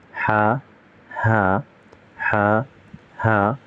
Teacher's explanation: ha comes from deep in throat with a soft breath, while ha comes from the middle of the throat with more friction